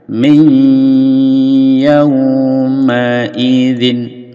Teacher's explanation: nun sukun ini dimasukkan ke dalam ya dengan mendengung dua harokat